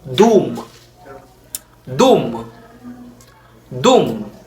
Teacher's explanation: we have the DW rounded before vowels